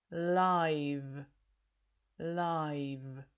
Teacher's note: we've got the same vowel sound as in the noun life, but the sound at the end of the word is the voiced sound that we heard in the verb live.